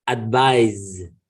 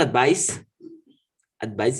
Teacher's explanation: so the sound of the z is with the throat z sound of the s it's only with the tongue and teeth